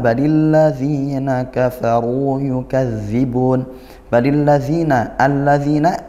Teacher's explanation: al bertemu huruf lam. Nah, idgham syamsiyah, dibaca masuk langsung ke huruf lam berikutnya.